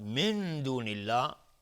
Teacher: نون ساکن بر دال اخفای حقیقی